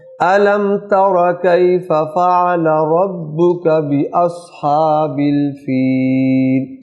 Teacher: اصحاب کی جو ہا ہے وہ حلق سے آئے گی